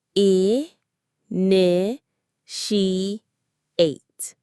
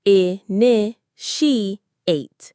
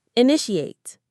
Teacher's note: Notice where the stress is. It's on the second syllable.